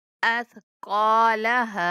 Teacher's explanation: قاف کے بعد الف مدہ ہے تو قاف کو کھینچ کے پڑھیں گے، اور ہا کے بعد بھی الف مدہ ہے تو وقف کرتے ہوئے بھی ہم الف کی ادائیگی پوری کریں گے۔